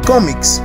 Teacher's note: Tiene el acento en la penúltima sílaba, en co, lo cual quiere decir que es grave.